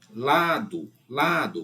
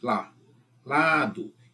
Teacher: Então, da direita pra esquerda é a segunda, ou seja, é paroxítona.